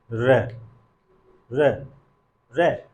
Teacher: जब हम उच्चारण कर रहे हैं तो हमारी जिह्वा क्या हो रही है, मुड़ जा रही है। तो चूंकि हमारी जो जिह्वा है मुड़ के ऊपर चली जा रही है, इसलिए इसको कौन सी ध्वनि कहते हैं, लुंठित ध्वनि कहते हैं · जब र का उच्चारण कर रहे हैं तो पा रहे हैं कि जो जिह्वा है मुड़ जा रही है, ऐसे ऊपर की तरफ र मुड़ रही है, झटके से मुड़ रही है, इसलिए इसको क्या कहते हैं, लुंठित कहते हैं।